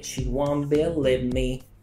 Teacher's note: でこの▁want▁の▁t▁も発音されていません。